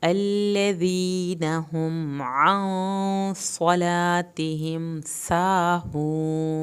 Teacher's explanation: अल्लज़ीना नून की ज़बर को लंबा नहीं करना, हम पे मीम ना हिले, आँ यहाँ पे गुन्ना होगा, देर लगेगी।